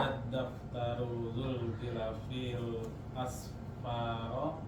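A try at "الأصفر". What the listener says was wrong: Asfari tahu ya, Asfari karena naat ngikutin sama-sama alif lam, ngikutin harokatnya ya. Kasrah karena ada alif lamnya ya. Bukan pakai fathah.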